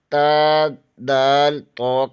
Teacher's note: زبان کی نوک ثنائے علیہ کی جڑ سے لگے تو تا، دال، طا ادا ہوتا ہے